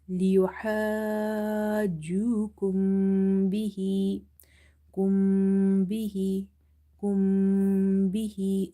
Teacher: After meme sakin you have letter ba, so do the nasalization or gunna in the meme sound.